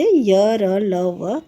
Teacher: अंतस्थ व्यंजन वे होते हैं जिनका उच्चारण करते समय जीभ, तालु, दांत और ओठ एक दूसरे को पूरी तरह से स्पर्श नहीं करते हैं।